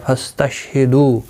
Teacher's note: واو مدہ ہے، ایک الف کی مقدار کے برابر کھینچ کر پڑھیں گے